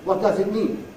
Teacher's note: /dʌz/ is too strong a vowel for so weak a word